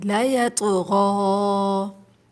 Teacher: یہاں پر طا ساکن ہے، اس میں آواز پلٹ کر آئے گی